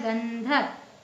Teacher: ध ध कौन से वर्ग का है त वर्ग का तो त वर्ग का पांचवा वर्ण क्या है न तो इसमें न का उच्चारण निकल रहा है